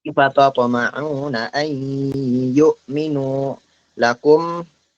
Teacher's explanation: ketika ada nun mati bertemu ya bertasydid, itu harus masuk ke hidung sebenarnya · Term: gunnahnya